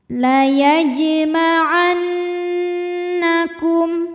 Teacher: La huruf jim dihukumi dengan qalqalah sughra sebab ada huruf qalqalah yaitu jim yang sukunnya ini sukun asli dan ada di tengah bacaan kita. Cara membacanya, jim dipantulkan dengan pantulan yang kecil. · Huruf nun dihukumi dengan gunnah musyaddadah atau wajibul gunnah atau nun musyaddadah sebab nun bertasydid. Cara bacanya dengung, bunyi dengungannya tahan sampai ada suara masuk hidung kurang lebih 2 harokat. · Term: Qalqalah Sugra